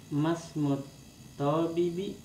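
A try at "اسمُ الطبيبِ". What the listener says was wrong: Bi-nya yang panjang. Bi-nya yang panjang, to-nya jangan dipanjangin. Nasi to-nya yang panjang. To-nya jangan dipanjangin. Ba-nya yang ditekan. Masmut tabibi.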